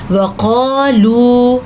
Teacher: وقالو موٹا قاف اور یہ واو مدہ ہے، اس کو کھینچ کے پڑھنا ہے آپ نے، یعنی کہ لمبا کرنا ہے